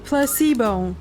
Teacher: The stress is on the middle syllable.